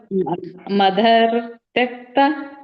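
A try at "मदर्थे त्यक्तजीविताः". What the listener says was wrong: ಇಲ್ಲ, ಅದು ಕೂಡಿಸ್ಬೇಡಿ. ಯಾಕೆ ಕೂಡಿಸ್ತೀರಾ ನೀವು? ಅಲ್ಲಿ ಬೇರೆನೆ ಇದೆಯಲ್ಲ ಪದ, ಅದು ಮದರ್ಥೇ ಎಳಿಬೇಕು. ಆಮೇಲೆ ತ್ಯಕ್ತ ಜೀವಿತಾಹ.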